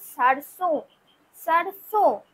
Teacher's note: কি লিখবো তাহলে দন্তসর র দন্তসয় ওকার বিসর এই যে আমি এখানে বিন্দুটা দিলাম এই বিন্দুটার জন্যই কিন্তু আমাদের উচ্চারণটা অনুনাসিক হবে মানে নাকে তোলা উচ্চারণ হবে